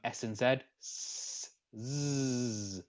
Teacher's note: We then have fricatives, which is where friction of it has friction of breath during production, resulting in a turbulent airflow.